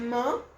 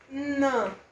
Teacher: Então eu tenho M, que é bilabial, N, que pode ser dental ou pode ser alveolar, e um Nh, que é palatal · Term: sons nasais